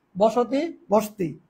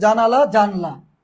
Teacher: সম্প্রকর্ষ বা স্বরলুপ মানে হচ্ছে স্বরধ্বনি লোপ পাবে